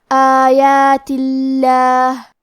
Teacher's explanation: لفظ الجلالہ مطلب کلمت اللہ کے لام کو پتلی آواز میں پڑھیں گے